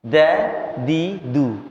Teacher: Bukan dun tapi dun, dadidu. Lidahnya di belakang gigi atas, gigi seri atas, di belakang gigi seri atas. Dun kan bukan ke langit-langit lidahnya.